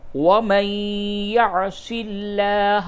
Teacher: نون ساکن کے بعد یا ہے، ادغام مع الغنہ ہوگا